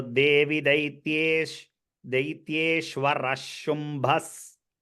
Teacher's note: visarga followed by a sha will take the sha sound